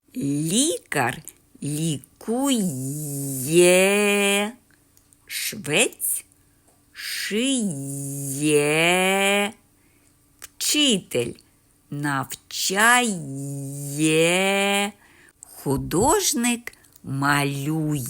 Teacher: у кожному з цих слів живе звукосполучення й е